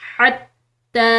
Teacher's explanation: हत्ता हलकिया पढ़ी जाएगी। ता मुशदिद है तो इसको हमने प्रेशर के साथ पढ़ना है। उसके ऊपर खड़ी ज़बर है तो खड़ी ज़बर हो, खड़ी ज़ेर हो या उल्टी पेश हो तो यह आम ज़बर से पेश के मुकाबले में एक अलिफ की मिकदार लंबे अदा किए जाते हैं।